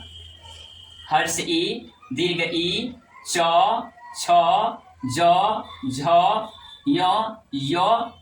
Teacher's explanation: तालू की सहायता से बोले जाने वाले वर्ण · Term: तालब वर्ण